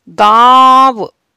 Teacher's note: जब हम अनुनासिक शब्दों का उच्चारण करते हैं तो वायु हमारी मुख और नाक दोनों से निकलती है और कहीं भी इसका रुकावट नहीं होती है · जैसे गांव, अब आप देखिए गांव जब मैंने शब्द बोला तो गले से और नाक से दोनों से आवाज आई और कहीं भी नहीं रुकी।